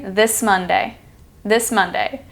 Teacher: the S sound and the M sound blend together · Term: blending